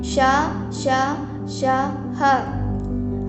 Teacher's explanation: जिन व्यंजनों का उच्चारण करते समय हवा तेज गति से मुंह से रगड़ खाने के कारण गर्मी सी पैदा होती है, उसे ऊष्म व्यंजन कहते हैं, जैसे श, श, श, ह आदि।